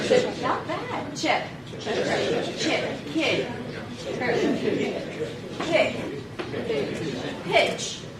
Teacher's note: although it's spelled with an I, it actually sounds more like an e.